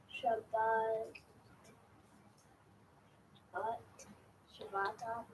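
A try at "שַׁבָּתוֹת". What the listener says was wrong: No, what's that vowel there toward the end? Shabbat. Shabbatot. Shabbatot.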